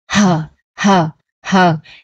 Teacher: Trong chữ hờ trong tiếng Việt của mình á, nó gần như là nó là âm âm rất là nhẹ luôn, nên nó không có bật hơi đâu, mà cái này có bán bật hơi nên là mình phải tập cho nó bật hơi đó ha. Hờ hờ hờ, giống như bạn nói chữ hờ giống như mình thở ra một cái hơi vậy đó, thở ra một lần hơi nè.